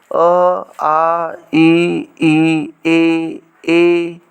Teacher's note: के उच्चारण में ओठ वृत्तमुखी या गोलाकार नहीं होते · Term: अवृत्तमुखी